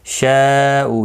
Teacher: مد متصل ہے، 4 الف کی مقدار کے برابر کھینچ کر پڑھیں گے. اور وقف کی صورت میں بھی 3 سے 5 الف کی مقدار کے برابر کھینچ کر وقف کریں گے کیونکہ یہ مد العارض وقفی ہوگا.